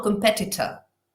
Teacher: Pero como veis en las transcripciones, la sílaba tónica que va marcada con el apóstrofe justo delante es la que cualifico bien. Lo tónico es una E, ha coincidido así, y veis el resto son schwas.